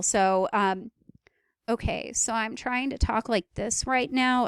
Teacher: a creaky voice is basically when you are trying to lower the register of your voice to the point where it produces a creak, especially at the end of sentences.